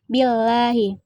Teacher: lafaz Allah didahului oleh huruf hijaiyah berharakat kasrah cara membacanya tipis